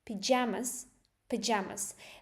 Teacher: the first part, you can barely hear it because the stress is on jamas.